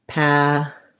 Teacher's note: So you can say first syllable stress with a true T, patent. And then this E becomes again a schwa or an I. It's a reduced sound.